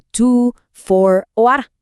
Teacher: Y aquí, el protagonista absoluto es un sonido llamado schwa. Es un sonido de vocal súper corto, muy relajado, algo así como un U muy suave. Este sonido es el que reemplaza a las vocales fuertes en palabras que no son tan importantes, como to, for o are.